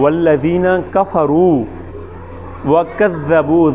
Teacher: ذال ہے زبان کی نوک، دانتوں کی نوک سے